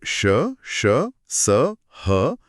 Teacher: जब श स ह का उच्चारण किया जाता है तो मुंह के अंदर वायु का मार्ग बहुत संकरा हो जाता है। एकदम सही। इससे हवा बहुत घर्षण के साथ रगड़ खाकर बाहर आती है जिससे एक हल्की सी ऊष्मा पैदा होती है।